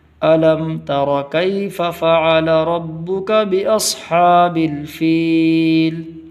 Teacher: تا کی آواز پتلی ہوگی